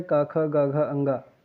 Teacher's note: क वर्ग का उच्चारण कंठ है